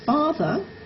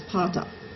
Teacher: where the labiodental fricative f is replaced by the bilabial stop p, and the dental fricative v is replaced by the alveolar stop t.